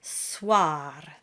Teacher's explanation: And of course, we always flip the R at the end. · the OI combination is voiced as a W followed by an A sound